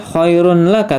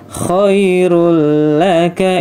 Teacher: ini tidak dibaca khairun laka, tapi khairul laka, idgham bila gunnah ya